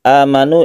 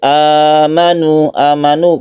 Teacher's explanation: Hamzah menjadi a yang panjang atau menjadi mad badal